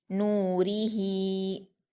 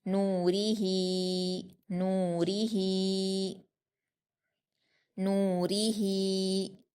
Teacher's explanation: نون پر واو مدہ ہے، اس کو 2 حرکات کھینچ کر پڑھیں گے۔ را پر زیر ہے، اس کو ہم جلدی پڑھیں گے۔